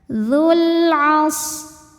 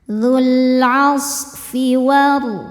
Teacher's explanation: Sodnya berdesis ya karena sod punya sifat sofir, berdesis seperti suara angsa.